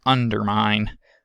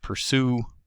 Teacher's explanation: the unstressed er is articulated by raising the jaw and raising the tongue body though not as much as it is for the stressed version of er